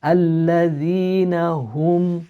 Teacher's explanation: ha from the bottom of the throat. Don't try to drag it out.